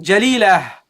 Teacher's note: when you stop on it, you don't pronounce it as a ta, you pronounce it as a ha. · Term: at-ta al-marbuta